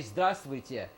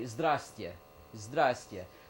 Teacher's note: what they do is they get rid of that V there. They never pronounce the V. Even Russians realize that, I think there are too many consonants together.